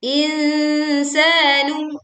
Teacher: Sa-nya dibaca panjang 2 harokat.